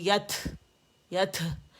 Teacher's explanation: بعض لوگ کیا کرتے ہیں کہ تھروٹ استعمال کر لیتے ہیں، 2 چشمی ہا اس میں ایڈ کر دیتے ہیں